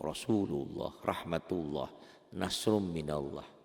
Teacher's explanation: lafaz Allah itu berbunyi tebal tafkhim, berbunyi o ya, seakan-akan bunyi o.